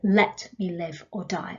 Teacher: it's like the first word has to have a stress on it